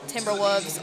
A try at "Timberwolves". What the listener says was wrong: There's an L in there.